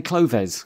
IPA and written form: klʊðɛs (Clothes)